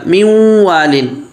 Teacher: واو کی مثال من وال، اب یہ نون ساکن ہے، اس کے بعد واو آ رہا ہے، یہ نون واو میں مدغم ہوگا لیکن ناقص ہوگا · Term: ادغام ناقص